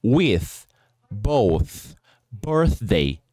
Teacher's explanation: nós temos o voiceless sound né ou seja o som não sonoro do do th